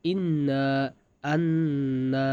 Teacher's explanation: নাকের বাঁশি হইতে গুন্নাহ উচ্চারিত হয়